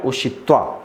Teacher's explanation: क्योंकि बाद में उ आया है इसलिए हो गया मूर्धन्य ष